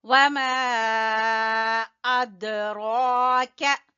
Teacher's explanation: वमा अदराक, ये है मद जायज और दाल के ऊपर कलकला करेंगे और रा के ऊपर खड़ी जबर है, खींचेंगे। अदराक का बारीक काफ है।